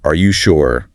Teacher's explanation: A short, sharp, are you sure with the stress on sure really demands a reevaluation